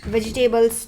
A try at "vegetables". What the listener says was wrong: Vegetable नहीं है, vegetables. Table नहीं है table नहीं है, बैठने वाला table नहीं है. Double. Table नहीं है, tables.